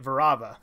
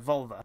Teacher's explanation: a lot of words with ELLs in Japanese have the L kind of turn into an R